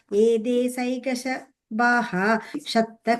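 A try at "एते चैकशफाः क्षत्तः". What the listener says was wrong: The Visarga will come there. So it will be like Ete Chaika Shapaha Kshattaha.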